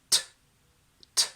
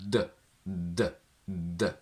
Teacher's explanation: Voiceless means that there is no vibration in your vocal cords. So if you say t, t, you will feel potentially your Adam's apple pushing forward, but no vibration from the vocal cords, as opposed to d, d, d, where you will feel a lot of vibration. Alveolar means that your tongue tip touches the alveolar ridge, which is the area just above where your upper teeth join the gum here.